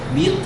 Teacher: When combined with the tongue head, we can have vowels which are high and prone, or high and back. Thus, the sound I, as in bit, is produced by having the front part of the tongue high